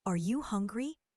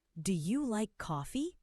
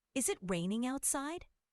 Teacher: Let's also practice using intonation for questions. In English, your voice usually goes up at the end of yes no questions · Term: rising intonation